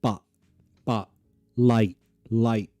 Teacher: when a T finishes a word, but, you can glottalize that. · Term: glottal T